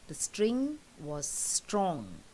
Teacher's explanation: So you have this nasal sound of ng which is repeated.